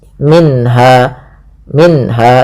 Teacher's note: ada bacaan izhar halqi yaitu suara nunnya dibaca dengan jelas. Minha minha tidak boleh minha langsung saja.